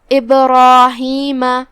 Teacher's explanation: پھر حرف الراء ہے اور اس پہ زبر ہے تو را کا حکم ہے تفخیم، جو کہ اس کے بعد مد الف ہے، تو ہم را کو اور مد الف کو دونوں کو تفخیم سے ادا کریں گے کیونکہ مد الف اپنے پیچھے والے حرف کا حکم لیتا ہے.